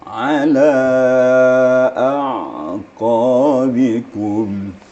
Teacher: Di makharijul hurufnya wastul halak di tengah-tengah tenggorokan. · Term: ain